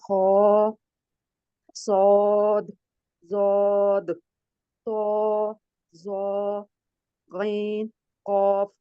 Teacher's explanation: 7 अल्फाज हैं जिनको हम हरूफ मुस्तालिया कहते हैं और इनको पुर पढ़ा जाता है